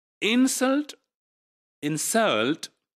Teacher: insult right so there is a difference between the two words in the first word the first syllable is made prominent and in the second word the second syllable is made prominent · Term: stress